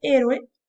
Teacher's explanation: También vamos a tener una secuencia o concurrencia vocálica entre la O y la E, pero en este caso la palabra consta de tres sílabas. La O y la E se van a separar. Así es que vamos a decir que la concurrencia viene a ser heterosilábica.